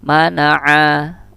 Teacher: Nggak ada titik, nggak ada apa-apa, berarti ini ma ya. Ma itu juga termasuk huruf syafawi, pertemuan bibir atas dan bibir bawah, dan dia juga termasuk tawasud ya, tertahan dan tidak.